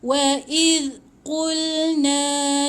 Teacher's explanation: zal hujung lidah di antara 2 gigi